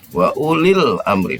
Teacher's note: Alif lam qamariyah ini maksudnya dibaca dia. Jadi jelas tidak samsiah.